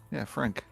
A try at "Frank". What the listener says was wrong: Well, it sounds when you say it, it sounds like you're pronouncing the A, not an E.